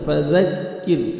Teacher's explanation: ذال کو نرمی سے ادا کرنا ہے، زا زور سے نہیں پڑھنا ہے